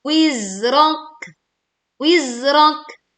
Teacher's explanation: Tekan huruf zai sukun dan tidak memantul